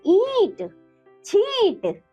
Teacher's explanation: जिन स्वरों के उच्चारण में हवा मुख व नासिका दोनों से निकलती है वे अनुनासिक कहलाते हैं। इसका चिन्ह ऊपर चंद्र बिंदु है।